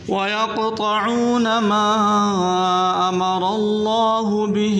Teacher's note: قاف کو موٹا کریں قلقلہ کریں اور طا کو بھی موٹا کر کے پڑھیں